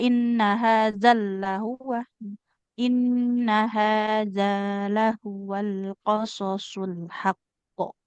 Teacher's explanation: bukan ditekan ke huruf lam karena lamnya enggak bertasydid